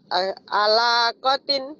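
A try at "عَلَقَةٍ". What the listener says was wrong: Gak ada yang panjang.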